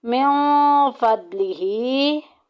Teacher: फ़द्लिही खड़ी ज़ेर एक अलिफ के बराबर लंबा करेंगे